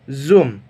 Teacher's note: is f stands for fricative this mineral produce consonant Sounds by blocking the Airstream in the mouth but not making complete closure